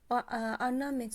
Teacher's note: Ornament sözündə vurğu düşəcək ikinci hecayə.